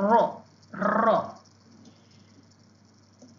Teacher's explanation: tepi hujung lidah berdekatan dengan makhraj huruf nun serta melencong ya melencong ke belakang tepi hujung lidah daripada situ keluarnya huruf ra ro ra.